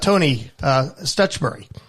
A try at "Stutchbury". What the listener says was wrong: It's Burry. Not Barry, Burry. was a little Barry, and I've been. It's the English pronunciation. I found myself going Stutchberry, but it's Stutchbury.